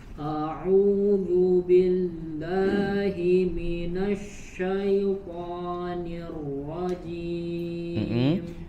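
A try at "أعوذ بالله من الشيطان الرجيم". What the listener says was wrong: Tebal tipisnya diperhatikan. A tipis. Coba A. Bukan A, jangan terlalu buka juga, tidak berlebihan. A. Yang penting dari suaranya sudah cukup. A.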